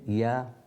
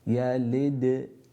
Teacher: ya from the middle of the tongue, yalid. Then the qalqala here, because the dal has a sukoon on it, qalqala meaning that we echo that sound.